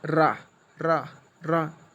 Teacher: बार बार आवाज़ ऐसे डबल करके आती है, इस वजह से इसे लुंठित व्यंजन में रखा गया है